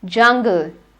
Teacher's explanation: That is called the hard palate. So the j sound is palato-alveolar. That means it is produced when your tongue lies between the teeth ridge and the hard palate.